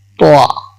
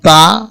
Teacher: হরফ দুইটি উচ্চারণের এক স্থানে একই, কিন্তু এদের সিফাত ভিন্ন। এই দুটো হরফের মধ্যে তোয়া কে মোটা করে পড়তে হয় এবং তাকে চিকন করে পড়তে হয়।